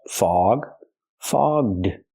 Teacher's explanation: We have to use the voiced ggg sound. Fog plus the voiced d sound.